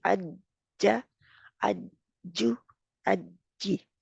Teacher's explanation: दरमियानी तालु जो है उसको सख्ती मजबूती के साथ से लगता है, और रैपिड सेपरेशन होती है, यानी कि बहुत जल्दी इसको अलग कर दिया जाता है। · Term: जीम